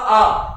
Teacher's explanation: लेकिन जब मैं बड़ा आ का उच्चारण करता हूँ, एकदम आ यानी स्पेस ज्यादा होता है, कहीं कहीं मुंह भी ज्यादा खुलता है, वायु ज्यादा आती है।